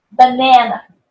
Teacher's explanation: Then we have banana, then the second syllable stress.